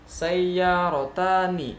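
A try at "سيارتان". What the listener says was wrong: Iya, bagus, lanjut.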